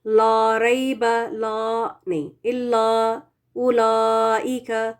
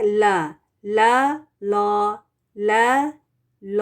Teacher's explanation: है इसको अवॉइड करना चाहिए लर बला नहीं इला उलाइक तो ला वाली आवाज नहीं आनी चाहिए लाम के साथ क्योंकि यह यूजुअली लाइट होता है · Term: बारीक लाम